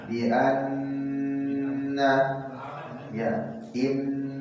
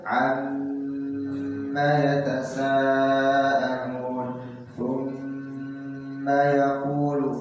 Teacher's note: Ba tasydid tidak bisa menjadi gunah ba hanya dua saja, nun dengan mim saja. Gunah nun musyaddadah, gunah mim musyaddadah. Cara membacanya ditahan.